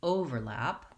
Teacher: I'm slightly louder on the first syllable, I'm going slower, there's more duration there, and I'm going quickly on the second syllable